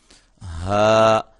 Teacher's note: اس کو ہم نے حلق کے انتہائی حصے سے ادا کرنا ہے جو کہ سینے کے قریب ہے. ہا اس کو ہا نہیں کہنا, ہا.